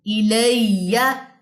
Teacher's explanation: ہا کی زیر اور یا کی زبر کو لمبا نہیں کرنا